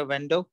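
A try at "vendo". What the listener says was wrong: वेंडो नहीं, बेंदो, बेंदो, बेंदो, एक तो यह है कि वी की आवाज बे होनी चाहिए, दूसरी यह है कि जोर पहली ई पे होना चाहिए।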